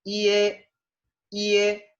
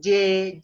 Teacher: Entonces el sonido es así. IE, IE, la I se pronuncia corta y la E se pronuncia más larga y enfática que la I.